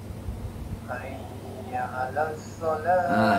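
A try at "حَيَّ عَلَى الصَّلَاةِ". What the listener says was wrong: tak nak alas. Alas huruf sod. La boleh panjang. Dan hujung dia pakai ha. Ha simpul. Pasal dia tamar buta. Tamar buta ni ha simpul. Jangan alas alas. Hayya 'alas solah.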